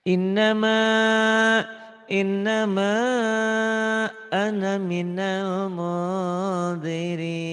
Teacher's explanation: Ana yang berarti saya jangan dibaca panjang. Ditandai dengan tanda sukun di atas alifnya.